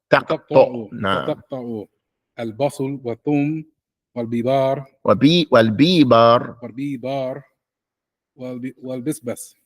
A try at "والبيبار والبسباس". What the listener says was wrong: But you read too fast. Not bisbas, it's bisbas. Right. والبيبار والبسباس. Just what's long. Make it long. Make it hard.